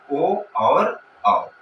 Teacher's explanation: कंठ का ओष्ठ के साथ संयोग हो जाए, तब इसको एक शब्द में कहा जाता है दोस्तों कंठौष्ठ्य। ठीक है दोस्तों, इसका उच्चारण स्थान होता है दोस्तों ओ और औ।